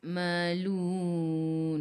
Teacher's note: Matikan dengan huruf nun. Hujung lidah menyentuh gusi atas. Ataupun hujung lidah menyentuh lelangit keras di bahagian depan.